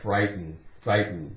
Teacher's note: We don't really make much of a sound with that T. It's more like frighten, frighten.